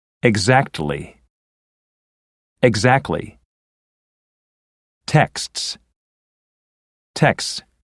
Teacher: in the last two words the T can be dropped